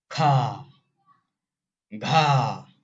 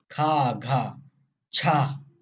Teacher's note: महाप्राण में हंकार ध्वनि उत्पन्न होगी, हंकार ध्वनि। खा घा, हंकार निकल रहा है, खा घा छा, ऐसे।